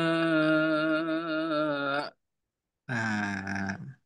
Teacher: Hamzah ini menutupnya sempurna. Makanya ada sebagian ulama yang mengatakan adanya nabar di situ. Ditekan sedikit.